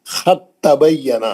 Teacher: सीधा ता में चले जाएंगे आप खत तबयना क्योंकि दाल और ता का मखरज एक ही है। दाल जो है ता के अंदर इतगाम कर लेगी। खत अब दाल पढ़ेंगे ही नहीं।